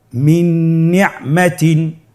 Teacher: নুন সাকিন তানবিনকে পরবর্তী হরফের সাথে মিলিয়ে গুন্নার সহিত পড়ব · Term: ইদগামে বাগুন্না